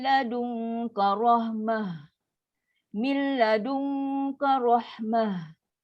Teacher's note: Dia ta marbutah, berhenti dengan ha yang sukun lepas angin.